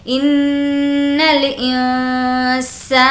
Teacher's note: یہاں پر نون کی آواز ناک میں چھپائیں گے کیونکہ اخفا